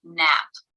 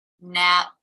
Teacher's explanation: the nature of a stop consonant in the sample word nap the lips are together cutting off the airflow · there is a stop of the airflow and a release so the stop of the airflow happens as the lips remain closed and the release when they part and the air comes through